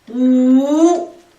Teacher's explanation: Бес дегенді у, үшінші тонмен. Дауыссыз дыбыстағы у, дауысты дыбыстағы у, екеуі қосылып у, үшінші тонмен айтамыз.